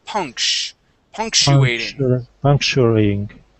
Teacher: This is punctuating. So this CTU is going to be like an SH sound.